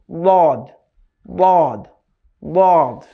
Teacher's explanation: জিহ্বার গোড়ার কিনারা উপরের দাঁতের মাড়ির সঙ্গে লাগিয়ে